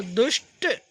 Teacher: दू प्लस टा है यानी उच्चारण स्थान मूर्धन्य है तो विसर्ग भी मूर्धन्य सा में बदल जाएगा